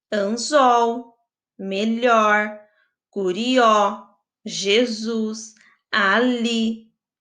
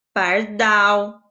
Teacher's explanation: observe que a última sílaba é forte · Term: oxítonas